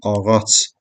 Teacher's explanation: Amma ağac budağı cdan sonra samit gəldiyindən bu olur ağac tələffüzdə ç səsinə çevriləcək